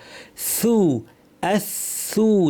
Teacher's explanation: জিহ্বা শীর্ষ দাঁতের শীর্ষে লাগিয়ে বাতাস সহ আওয়াজ সহ